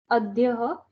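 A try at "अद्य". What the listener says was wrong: Adya. That's all. No aha. Adya.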